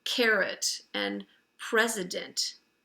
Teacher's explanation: it's a schwa O because there's no accent on that part of the word